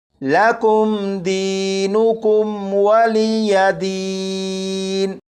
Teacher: ان دونوں میم ساکن میں سے کسی بھی میم ساکن پر غنہ نہیں کریں گے